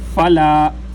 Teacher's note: حدود اللہ، فلا، فا ہونٹوں سے ادا ہوتا ہے، ہونٹوں کے تری والے حصے پر جب اپنے اوپر والے دانتوں کو لگاتے ہیں تو فا ادا ہوتا ہے